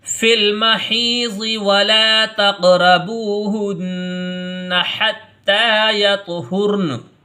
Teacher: ولا کو تھوڑا کھینچ کے پڑھیں گے ایک الف کے برابر، کیونکہ لام کے بعد یہاں الف مدہ آیا ہے۔ · نون کی آواز کو ناک میں گنگنا کر کے پڑھا، اسی کا نام غنہ ہوتا ہے